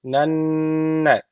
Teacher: şeddeli nun var mutlaka bir Elif miktar tutuyoruz